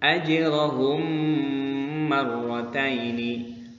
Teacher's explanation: terjadi apabila ada mim sukun bertemu dengan huruf mim maka cara membacanya harus dimasukkan atau ditasydidkan kepada huruf yang berikutnya